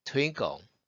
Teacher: 호흡이 많이 빠져나가기 때문에 호흡을 참은 상태에서 끄에 가깝게 발음이 되죠